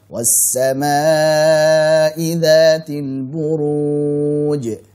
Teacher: huruf sin bertasydid kita alirkan